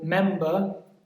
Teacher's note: member it's on the first syllable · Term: stress